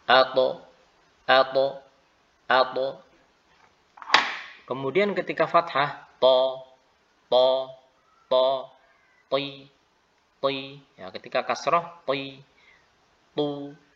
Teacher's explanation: ujung lidah yang bertemu dengan bagian dari akar dari gigi seri yang atas atau gusi. Yang gusi, ya, gigi seri yang atas. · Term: huruf ta